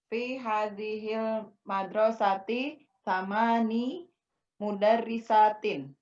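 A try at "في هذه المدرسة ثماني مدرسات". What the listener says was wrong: Jamil. Fi hadil madrasati samani mudarrisatin. Sahih.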